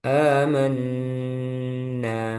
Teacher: Nah, itu pada riwayat lain ada yang membaca 6 harokat. Nah, di riwayat Hafaz Jalur Syatibi itu membaca 2 harokat. Amanna. Gak boleh lebih. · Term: mad badal